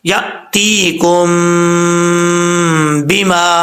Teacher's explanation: اب یہاں پر مد متصل ہے، 5 الف کے برابر اس کو لمبا کر سکتے ہیں